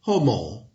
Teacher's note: H is slightly aspired aspirated as in English heat